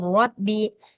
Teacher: lamnya enggak perlu dibaca